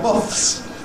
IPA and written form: mɒθs (moths)